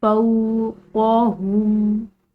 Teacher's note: क़ाफ और हा ये मोटे अदा किए जाएंगे, क़ाफ हल्किया हरूफ के साथ साथ मोटा है, ठीक है।